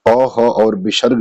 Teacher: ये कंठ ध्वनि है क्योंकि इसका उच्चारण स्थान कंठ से होता है